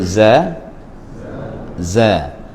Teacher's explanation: Jadi kalau huruf zai itu ketika dia berbaris, maka dia tidak kuat sangatlah bunyi sofirnya.